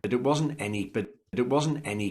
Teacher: He's stressing the negated or negative auxiliary verb. So he's saying it wasn't.